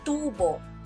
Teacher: Sa salitang tubo, ang unang pantig ang may diin.